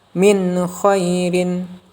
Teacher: Membacanya dengan jelas tanpa dengung. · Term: izhar